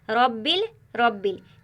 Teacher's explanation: इस पूरे जुमले में रब्बी की रा मोटी पढ़ी जा रही है। रब्बिल, रब्बिल जो रा है वो पुर पढ़ी जाए क्योंकि रा के ऊपर ज़बर है